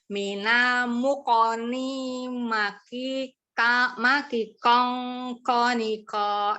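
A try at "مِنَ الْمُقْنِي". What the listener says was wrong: Ya, nya panjang. Jangan ikutin lagu deh, nggak pakai lagu juga nggak apa-apa. Maki kong.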